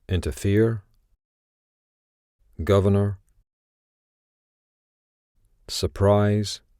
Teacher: you'll hear that in these examples the first r has been dropped